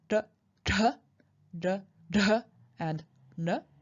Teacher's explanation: produced by retroflect I.E by curling back your tongue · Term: retroflex sounds